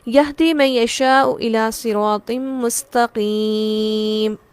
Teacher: آیت کا اختتام یائے مدہ ہے، اور یائے مدہ کے بعد میم کو ہم خود ساکن کر رہے ہیں، سکون عارضی ہے. یہ مد عارض وقفی ہے.